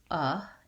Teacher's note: letter o actually says the sound ah in the first syllable it's the vowel schwa and in this case it's a stressed schwa where we have the sound is uh and we hold it